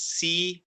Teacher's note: So for example, after a sin with a kasra, there's a ya, you pronounce it as si with a two count